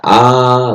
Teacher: आ जो है बृहतमुखी, बृहतमुखी का मतलब जिसमें मुख बड़ा हो जाता है, चौड़ा हो जाता है।